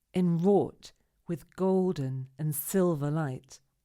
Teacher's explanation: In order to make the poem read beautifully and make sense, we need to place stress on certain syllables. The most important syllables in this line are numbers 2, 4, and 6.